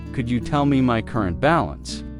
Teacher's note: Could you becomes could ya in faster conversation.